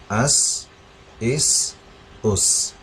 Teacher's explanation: تو ہم نے سین کو ایسے ادا کرنا ہے کہ اس میں سا الگ رہے اور اس میں صاد بھی میچ نہیں کرنا، بالکل لائٹ ساؤنڈ ہے اس کا